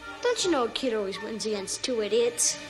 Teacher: natives often reduce the pronoun you to just y. · When a word ending in t is followed by u, they morph together into a ch sound. But because the u is reduced, we hear cha instead. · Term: connected speech